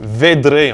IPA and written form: ˈved.ɾe (vedre)